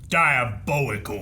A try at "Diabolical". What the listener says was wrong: You can say the bolical, but why is the dia not also accented? Like just went diabolical. Like Why is it not like diabolical? Like you have the D.